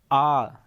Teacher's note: मुख जो है इसमें पूरा खुलता है जैसे कि आ जब आप बोलते हैं आप लोग यह पूरा